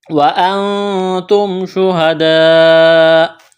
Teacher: شہداء، لمبی مد ہے، 4 الف کے برابر کھینچنا ہے۔ یہاں جب وقف کریں گے تو حمزہ کو ساکن کریں گے۔